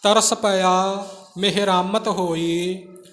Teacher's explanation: ਮਿਹਰਾ ਮਤ ਇਸ ਤਰ੍ਹਾਂ ਵੱਖਰਾ ਵੱਖਰਾ ਨਿਖੇੜ ਕੇ ਨਹੀਂ ਬੋਲਣਾ, ਮਿਹਰਾਮਤ ਪਾਠ ਇਕੱਠਾ ਕਰਨਾ, ਰਾਰੇ ਦੇ ਕੰਨੇ ਨੂੰ ਥੋੜ੍ਹਾ ਜ਼ੋਰ ਦੇ ਕੇ